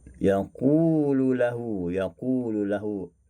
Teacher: memasukkan lam yang pertama ke dalam yang lam yang kedua